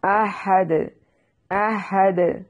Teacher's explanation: احد، احد، حمزہ کو تحقیق سے پڑھیں گے اور دال کو وقف کی صورت میں ہلا کر یعنی قلقلہ کر کے پڑھنا ہے کیونکہ دال حروف قلقلہ ہے.